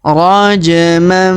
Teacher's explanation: perhatikan huruf ja berharakat sukun maka kita pantulkan atau kita qalqalahkan